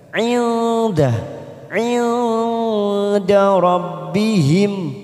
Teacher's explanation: Hum nun sukun bertemu dal namanya ikfa aqrab. Kita samarkan bunyi nun sukun 3 ketuk.